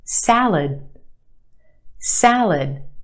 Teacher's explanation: The second syllable is our schwa.